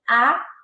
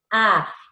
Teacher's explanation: como que la lengua se queda en la mitad, por eso está término medio